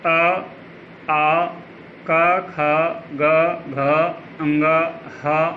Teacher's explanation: इनका उच्चारण स्थान कंठ है और वर्ग का नाम कंठ्य है